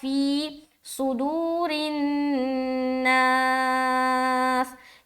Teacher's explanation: صاد کو موٹا رکھیں گے، دو کو کھینچیں گے اور را کو باریک رکھیں گے، ٹھیک ہے. صاد کیوں موٹا؟